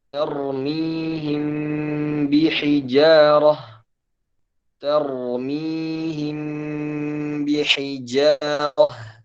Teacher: Ini dibaca ikhfa atau kita sebut dengan ikhfa syafawi, yaitu mim bertemu dengan ba.